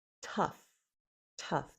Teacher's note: There's a little puff of air for that first t. And then it's followed by the short u uh as a cup.